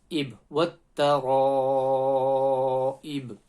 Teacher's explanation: Ib, when you stop there, the ba is a qalqala letter, so you're going to have that slight bounce.